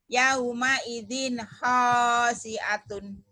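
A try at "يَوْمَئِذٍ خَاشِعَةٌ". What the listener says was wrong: Bagus, cuman shinnya aja ya, hutang. Khasyiatin. Khasyiatun. Shin.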